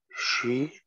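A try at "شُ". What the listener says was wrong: Mit Dhamma.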